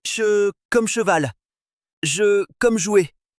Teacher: des cas où le dos de la langue vient toucher l'avant du palais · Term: prédorux prépalatales